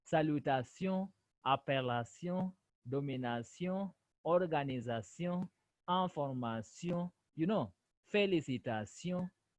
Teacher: Sion. Remember, there's also the nasal sound in it. The N, you smell it. So you say sion, not sio, but sion.